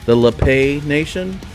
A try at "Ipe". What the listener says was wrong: The Ipe. Those are two I's, not two L's.